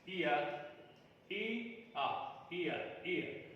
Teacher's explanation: It is a glide from centralized front unrounded vowel just above half closed position to central unrounded vowel between half closed and half open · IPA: /ɪə/